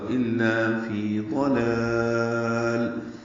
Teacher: ضلال میں ضاد پر پڑھیں گے، لام باریک ہیں دونوں، اور دوسرے لام پہ وقفاً اظہار ہوگا